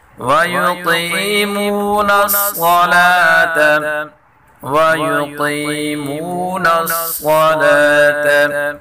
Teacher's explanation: قاف اور صاد دونوں کو اوپر پڑھیں گے۔